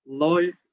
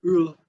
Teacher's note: The next one is the double L, which represents this dark L we also have in Portuguese and in English, like L, loi, which means sword, kind, or type, and ul, which means star.